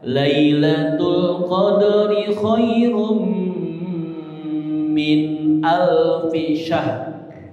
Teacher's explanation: Kalau syahr mati di ha, ro'nya terdengar tipis.